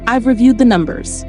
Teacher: Think of it like a door. A falling tone closes the door behind the sentence. · Let your voice drop on the word numbers. Don't let it lift. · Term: falling intonation